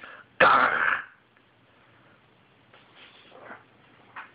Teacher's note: it's a hard G plus the Klingon H. It almost sounds like gargling.